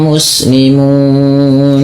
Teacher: di panjangkan munya karena bertemu dengan nun yang awalnya berharakat kemudian dia sukun maka dinamakan dengan sukun arid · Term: mad arid sukun